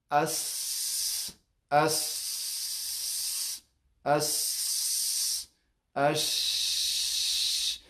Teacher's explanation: وګوره دا هیڅ ټکان نه خوري. اهتزاز دلته په دغه وترین صوتیین باندې کوم ټکان نشته، ځکه چې جریان د هوا چې دی دا جری دی، دلته موانع نشته چې د هوا را واپس کړي او دغه وترین صوتیین دغه باندې فشار وارد کړي، دا یې وپړسېږي یا اهتزاز یا دګیدا پیدا کړي، دا شی نشته. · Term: همس